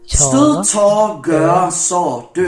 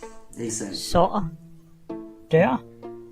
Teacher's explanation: It's been called creaky, cough-like, and let's not forget, a constant stream of tiny hiccups. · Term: stöd